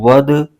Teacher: ساکن ہے، دال ساکن کو واو کے ساتھ ملائیں گے، اور دال حروف قلقلہ میں سے ہے، یعنی یہاں بھی قلقلہ ہوگا، آواز لوٹتی ہوئی نکلے گی